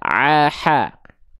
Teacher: ain dan ha kecil dilafalkan dari bagian tengah tenggorokan ya. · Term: wastul halqi